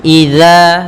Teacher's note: jangan sampai terbaca dengan za tapi dia dzal ya huruf dzal maka dza ujung lidah menempel dengan gigi sari kita